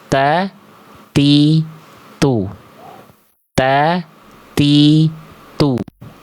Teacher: Mahmus itu artinya hams itu artinya mengalir nafas. Tapi untuk huruf ta, dia hanya berupa percikan nafas saja. · seharusnya cukup dilafalkan percikan nafasnya itu nggak berlebihan, biasa aja